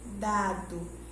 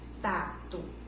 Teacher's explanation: o D ele tem um som um pouquinho mais fraquinho, dado, e o T já tem um som mais forte, tato